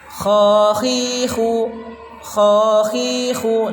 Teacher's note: Kha khi khu dibaca panjang 2 harokat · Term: mad tabi'i